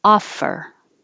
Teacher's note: make an f first and then use sound that's it offer the vowel is ah as in draw